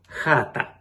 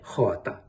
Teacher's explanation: звук а середнього ряду а не заднього як у Наддніпрянській діалектах тобто хата а не хота приголосні вимовляються чітко і не оглушуються